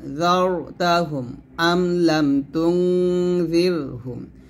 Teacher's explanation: এখানে যার মোটা হবে আর জির পাতলা হবে, র সেকেন্ডটা।